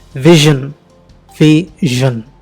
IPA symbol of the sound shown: ʒ